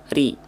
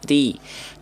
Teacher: huruf ro dibaca tipis itu ketika huruf ro berharakat baris bawah kasrah